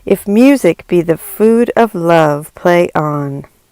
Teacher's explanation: a line of iambic pentameter consists of five such feet as a result a line will sound like a series of five heartbeats the dum de dum de dum de dum de dum we